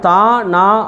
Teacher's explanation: நாவின் நுனி மேல்வாய் பல்லின் அடியை தொடுவதால் நமக்கு பிறக்குது